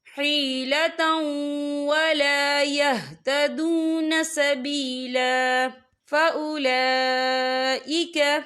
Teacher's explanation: وَالنِّسَاءِ وَالْوِلْدَانِ لَا يَسْتَطِيعُونَ حِيلَةً وَلَا يَهْتَدُونَ سَبِيلًا، یہ دیکھیں حِيلَةً، تا کے پر تنوین ہے، تنوین کے بعد جو ہے واو آ رہا ہے اور واو جو ہے حروف یرملون میں سے ہے تو یہاں پر ادغام ہوگا تو ہم اسے تھوڑا سا غنّے کے ساتھ پڑھیں گے